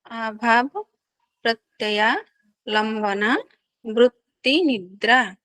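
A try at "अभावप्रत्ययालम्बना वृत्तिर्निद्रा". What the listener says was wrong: वृत्तिर्निद्रा, रा का उच्चारण भी कीजिएगा, वृत्तिर्निद्रा। हाँ, वृत्तिर ता के बाद जो आएगा ना वो रा आएगा आपका, जो ना के ऊपर है ना रा, वो आएगा वृत्तिर निद्रा।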